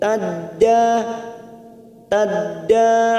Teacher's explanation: fathah bertemu Alif dua harakat Mad thii